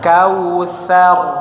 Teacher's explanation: Sa-nya dikeluarkan lidahnya, huruf sa, ujung lidah dengan gigi atas.